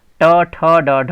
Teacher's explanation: इनका उच्चारण स्थान मूर्धा होता है, इसलिए इन्हें मूर्धन्य व्यंजन कहते हैं।